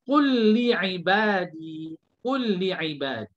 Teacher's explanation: Dan kalau ada huruf lam bertemu lam, contoh qul li ibadi, qul li ibadi. Lam yang pertama kita dah gabung, kita masukkan kepada lam yang kedua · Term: idghamkan